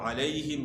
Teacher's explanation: علیہم، عین کی آواز اس کا مخرج جو ہے عین کا گلے کا درمیان ہے، وسط حلق ہے، گلے کا درمیان۔ اور علیہم یہاں یا لین ہے، یا ساکن سے پہلے زبر ہے، اس کو نرمی کے ساتھ آپ نے ادا کرنا ہے۔ اور یا کا مخرج زبان کا درمیان اور اوپر کے تالو سے۔